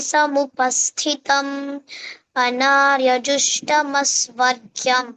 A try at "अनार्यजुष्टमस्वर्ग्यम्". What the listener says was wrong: Not jush. Jush. Jush. So that tongue should touch top roof of the mouth. Anarya jush.